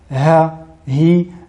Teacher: la lettre ha tout d'abord ha hi nous constatons que les les cordes vocales s'ouvrent légèrement contrairement à la lettre Hamza Sakina